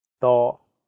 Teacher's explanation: The first character is in high flat tone, first tone. It means many.